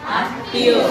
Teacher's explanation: তাহলে মফলা যদি শেষ থাকে তাহলে ওই বর্ণের উচ্চারণ কবার হচ্ছে? দুইবার। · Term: দ্বিত্ব উচ্চারণ